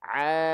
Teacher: Ain suaranya harusnya masuk semua keluar dari rongga dari tengah tenggorokan ke rongga tenggorokan ke rongga mulut keluar mulut